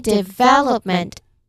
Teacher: This word ends in meant and that suffix is one of the quiet closers in English. It never carries the stress. · That vowel in the middle is where the energy goes. Third syllable from the end.